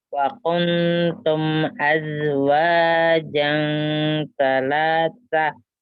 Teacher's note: Mim sukunnya jangan ditahan ya. Mim sukunnya bertemu dengan alifnya izhar. Yang ditahan ikhfa-nya saja.